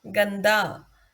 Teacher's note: द से पहले अनुस्वार आया है और द त वर्ग में आता है, इसलिए इस अनुस्वार का अर्थ है आधा न, जो कि त वर्ग का पंचम अक्षर है।